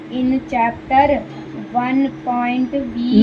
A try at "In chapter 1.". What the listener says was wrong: No, in chapter 1. That is full stop.